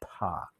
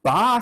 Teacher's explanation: when i make a ba sound okay my vocal cords when i release my lips my vocal cords are already vibrating they've caught the air down here they've caught the air before